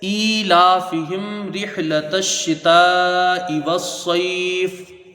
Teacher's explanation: हा मीम ज़ेर हिम, ईलाफिहिम, मीम साकिन के बाद रा है, तो यहाँ पर इज़हारे शव्वी होगा, यानी मीम साकिन को ज़ाहिर करके बगैर गुन्ना के जल्दी पढ़ा जाएगा